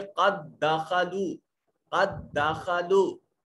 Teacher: پہلا ساکن تھا دوسرا متحرک تھا، تو پہلے کا دوسرے میں ادغام کر دیا۔ جب ادغام کیا تو پھر یہ شد کی علامت آ گئی، 2 حروف کو ملانے والی اس ڈبلیو کی علامت کو شد کہتے ہیں۔ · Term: ادغام مثلین